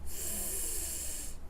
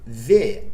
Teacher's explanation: Quando você diz F, que é o som do F, não existe vibração da corda vocal. Mas quando você diz V, a corda vocal vibra.